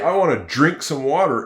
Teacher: When you say, I want to drink some water, it sounds like a J, doesn't it? But in fact, it's a D-R together.